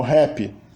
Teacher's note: A rótica inicial é sempre realizada como uma fricativa glotal H